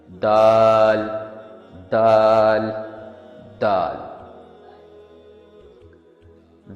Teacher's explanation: حروف دال کا مخرج زبان کے آگے کا حصہ اور اپر فرنٹ ٹیتھ کے نیچے کا حصہ ہے۔